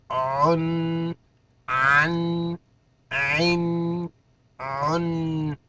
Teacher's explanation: عین کو ادا کرتے وقت حلق تھوڑا سا گھٹ جائے گا